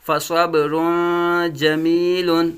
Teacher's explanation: صاد کو پر مستعلیہ پڑھیں گے